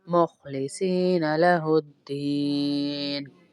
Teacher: दीन को इसलिए लंबा कर रहे हैं, यहाँ पर भी या मद्दा है।